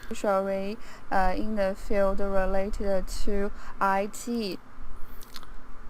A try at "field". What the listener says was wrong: Field, there's no or.